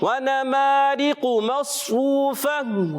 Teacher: واو مدہ کو ایک الف کھینچ کر ادا کریں گے، گول تا کو ہا سے بدل دیں گے